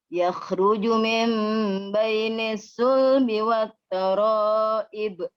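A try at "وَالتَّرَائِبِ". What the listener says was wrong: Ini taraibnya kurang panjang, Bu ya. Di sana 5 harakat.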